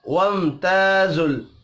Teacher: ذل لام ساکن پر قلقلہ نہیں کرنا